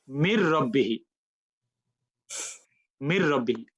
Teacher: you will start from meme and land on ra. And noon becomes non-existent.